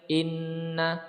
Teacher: Inna nun musyaddada ya, nun berharokat bertanda tasydid, ditekan ya, dimasukkan ya, kemudian ditekan disertai gunnah atau dengung, ditekan 2 ketukan